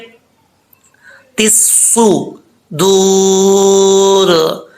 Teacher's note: سواد حروف مستعلیہ میں سے ہے، پر پڑھا جائے گا